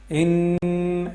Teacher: اوپر اگر شد ہو تو وہاں پہ غنہ کرتے ہیں، یعنی ناک میں آواز لے کے جاتے ہیں نون کی، اور آواز کو جو ہے 1 سیکنڈ لمبا کرتے ہیں ناک میں